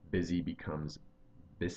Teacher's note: I changed the Z sound to an S